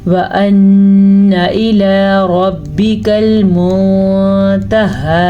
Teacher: रॉ को फिर से पुर पढ़ना है क्योंकि रॉ के ऊपर ज़बर है।